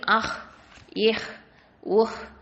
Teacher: அந்த ஹா வந்து தொண்டையோட எழுத்து, அது வந்து deepest part, closest part. Closest பார்ட்டுங்கிறது வந்து என்ன சொல்லுவோம் அப்படின்னு சொன்னால் அதனல் ஹல்க்குன்னு சொல்லுவோம்.